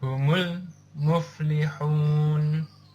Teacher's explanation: cara membaca dari hukum Alif Lam Qomariah yaitu jelas dan tegas tidak berdengung tidak juga di idgham kan atau dileburkan